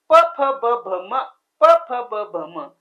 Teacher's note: दोन्ही होठांचा एकमेकांना स्पर्श होतो